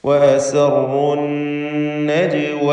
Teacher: ജീമിന് ഖൽഖല സുഗ്റ നൽകി ശബ്ദം ഹറക്കത്ത് പോലെ ചലിപ്പിക്കേണ്ടതാണ്.